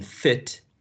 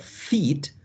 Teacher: the short and lax e as in fit, and the long and tense e as in feet